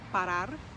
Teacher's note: end with a a vowel or an n or an s the emphasis is on the last syllable · The emphasis is on the last syllable, parar. So we say parar as the emphasis at the end.